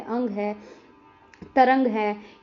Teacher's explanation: ध्वनि जो है वो नाक से उत्पन्न होती है। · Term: अनुस्वार